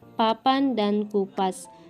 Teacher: huruf P yang bercirikan mati oral bilabial dan plosif